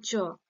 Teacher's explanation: জীবটা আবার উপরে তালুতে বা সাইডে একটা ঘর্ষণজনিত আংশিক বাধা পাচ্ছে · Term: ঘৃষ্ট ব্যঞ্জন ধ্বনি